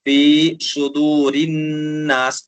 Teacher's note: سین کو باریک پڑھیں گے، صاد کو پر کر کے پڑھیں گے، یعنی تھوڑا سا منہ کو گول کریں گے · را کے نیچے زیر ہے تو نرمی کے ساتھ آرام سے اور باریک پڑھیں گے